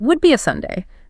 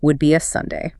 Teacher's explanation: But the Irish speaker in the clip used that distinct fall-rise pattern. The pitch on the word Sunday lifted up high and then dropped sharply down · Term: fall-rise intonation contour